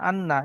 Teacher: নন মুসাদ্দা এক আলিফ পরিমাণ গুন্না করে পড়তে হবে